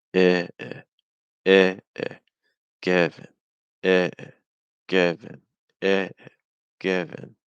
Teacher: the first syllable is a little longer, it's higher in pitch. The second syllable is faster, it's weaker, it's softer, and it's lower in pitch because it's not stressed.